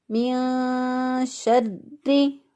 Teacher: من شری، اب را کے اوپر شد ہے، اس کو مضبوطی اور قوت کے ساتھ پڑھیں گے، من شری، لیکن را کو باریک پڑھیں گے کیونکہ را کے نیچے زیر ہے